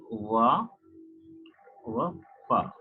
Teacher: जब हम व या फ बोलते हैं तो हमारा जो नीचे का होंठ होता है ऊपर के दांत को टच करता है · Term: लेबियोडेंटल साउंड